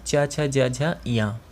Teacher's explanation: च वर्ग में आते हैं च छ ज झ या, और इसका उच्चारण स्थान है तालु, जो कंठ के थोड़ा सामने होता है, मतलब आगे की तरफ, कंठ से थोड़ा आगे, वो होता है तालु।